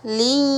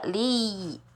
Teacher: Beda kan huruf yang ketika kita membuka rongga hidung dengan kita menutup rongga hidung kita. Li. Ketika dibuka li.